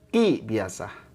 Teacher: Kalau ngucapin qaf kasroh, jangan bunyi kui. Kalau kui itu tebal. Jangan kui ya, tapi ki biasa.